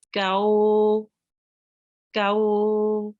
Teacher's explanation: the Kaf will join on to the Vaw, and we will prolong it for 2 seconds. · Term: Vaw Leen